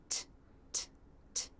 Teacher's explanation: Tongue tip is at the roof of the mouth, teeth are together, the air is stopped. Then the tongue tip pulls down, the teeth part, and the air is released. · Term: true T sound